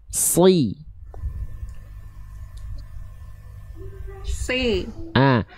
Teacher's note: lafalkan huruf shadnya lebih tebal lagi. Angkat pangkal lidah.